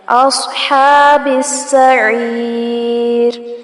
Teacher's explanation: اصحاب السعیر، صاد کو پر کیا جائے گا اور ہا پر کھڑی زبر ہے، کھینچیں گے اور با کو سین کے ساتھ ملائیں گے